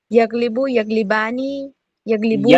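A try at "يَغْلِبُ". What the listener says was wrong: यगलिबु, यगलिबानी। नहीं नहीं नहीं नहीं नहीं। आप गईन को नहीं पढ़ रहे सही से, इसीलिए मैंने आपको पढ़ने के लिए दिया था। यग।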